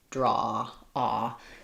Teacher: in American English, ah, as I mentioned before, is nice and open like the ah vowel, but slightly rounded.